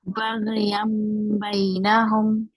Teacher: instead of saying Baghyan, yan, the noon will be changed to Meme.